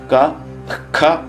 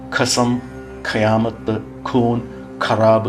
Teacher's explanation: മാതൃകാക്ഷരങ്ങൾ ആകുന്നു ക ഖ എന്നുള്ള അക്ഷരങ്ങളുടെ മുമപിൽ വിസർഗം ചേർന്നു വരുന്നതാണ് ജിഹ്വാമൂലിയം തൊണ്ടയിൽ നിന്ന് അതായത് നാവിന്റെ ഉള്ളിലെ മൂല ത്തിൽ നിന്നും ഉച്ചരിക്കുന്നതാണ് ജിഹ്വ മൂലിയം എന്ന് പറയുന്നത്